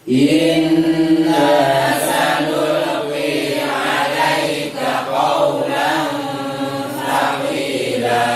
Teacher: perhatikan sanulqi, lamnya tidak boleh mantul. · Kemudian qawlan thaqila, qi itu qaf sifatnya tebal. Ketika membaca sanulqi dan thaqi itu tampak tebalnya.